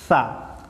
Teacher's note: Hamas itu berdesis, nafas berhembus atau berdesis.